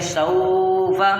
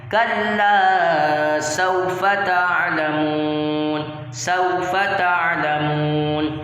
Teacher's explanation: جب بھی واو ساکن سے پہلے زبر آئے گا تو وہاں واو لین ہوگا اور اس کو ہم نے بغیر کھینچے پڑھنا ہے